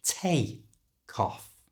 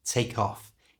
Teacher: we can connect these two words together and we do that by moving the C sound from the end of take to the front of the O in off so take off becomes take cof and at a more natural